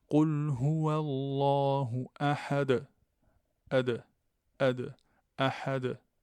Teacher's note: la qalqala, la résonance, que c'est une sorte de rebond ou un claquement de points d'articulation